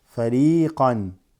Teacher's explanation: Ya sukoon makes the ra with a kasra long.